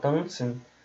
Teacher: um brasileiro que fala tanzen, que nasaliza a vogal